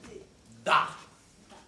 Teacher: La consonne D, par exemple, se prononce en donnant du bout de la langue sur les dents d'en haut